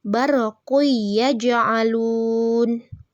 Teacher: memasukkan huruf yang pertama pada huruf yang kedua seolah-olah menjadi satu kesatuan huruf yang ditasydid dan disertai dengan berdengung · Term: idgham bi gunnah